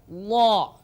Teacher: Jadi dhad ini boleh lidah kita menyentuh ke geraham gigi, geraham kanan atau boleh juga ke kiri. Boleh dha ke kanan atau kiri, dha atau ke atas ke depan, dha. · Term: huruf dhad